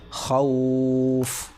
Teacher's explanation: تو حرف لین کے بعد سکون وقف کی وجہ سے آ رہا ہے، لہٰذا یہاں پر مد ہوگا اور 3 الف کے برابر کھینچ کر پڑھا جائے گا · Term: مد لین عارضی وقفی